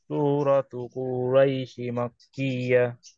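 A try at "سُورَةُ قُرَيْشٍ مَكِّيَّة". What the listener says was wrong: কুরাইশিম, সিন যায় মিমেকে ধরছে, মিমের মধ্যে তাসদিদ আছে, এখানে তাসদিদটা দেয় নাই।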